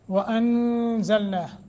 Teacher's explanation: نون ساکن کے بعد زا حروف اخفا میں سے ہے اخفا کریں گے